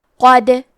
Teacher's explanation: کلمت قد میں حرف دال پہ جزم ہے، کیونکہ دال بھی حروف القلقلہ میں سے ہے تو ہم یہ حرف کو ہلاتے ہوئے یہ کلمہ کو پڑھیں گے